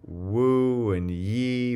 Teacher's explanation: your mouth is in the same configuration for the vowel and the consonant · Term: glides